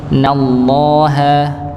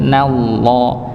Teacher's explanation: Na-nya tipis, lamnya yang tebal.